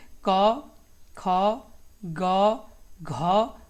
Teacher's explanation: कंठ से आपका किसका होता है? तो आपका होता है क, ख, ग, घ